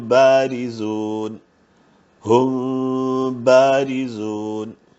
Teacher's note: ഇതിൽ പ്രത്യേകിച്ച് ശ്രദ്ധിക്കാനുള്ളത് വായ പൂർണമായിട്ട് പൂട്ടിയിട്ടാണ് പലരും ഓതാറ് പക്ഷേ അങ്ങനെയല്ല ഓതേണ്ടത് ചുണ്ടുകൾക്കിടയിൽ ഒരു പേപ്പർ കനത്തിന്റെ ഗ്യാപ്പ് ഇടണം എന്നാണ് അപ്പൊ അല്പ ശബ്ദം വായിലൂടെയും ബാക്കി ശബ്ദം മൂക്കിലൂടെയും ആണ് വരേണ്ടത് അവസാനം ബ ഉച്ചരിക്കുന്ന സമയത്ത് ചുണ്ടുകൾ കൂട്ടി മുട്ടുകയും വേണം ഒരു അല്പം നേരത്തേക്ക് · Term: ഇഹ്ഫ